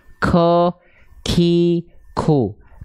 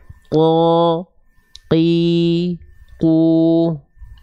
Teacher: harusnya lebih dalam teman-teman lafalkan terlalu keluar terlalu ke depan akhirnya ada bagian pangkal lidah teman-teman yang menyentuh ke langit-langit yang keras